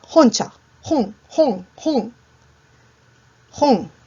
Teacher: Cuando tú pronuncias honcha, el sonido viene de más atrás del velo del paladar todavía. Ese es un sonido uvular.